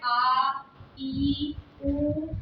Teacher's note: इनको बोलने के लिए आ, ई, उ यानी कि इससे ज्यादा समय लगता है, इसलिए इन्हें हम दीर्घ स्वर कहते हैं।